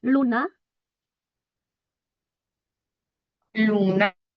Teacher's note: No, no es dental, es alveolar, porque la lengua va tocando los alveolos, entonces no puede ser dental.